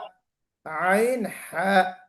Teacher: हा जो थोड़ा सा मिड से निकलता है, मोटा। दरमियाने हलक से।